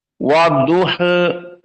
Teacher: Wars an-Nafi' membaca dengan taklil wa-duha, dan ini dinamakan imalah as-sughra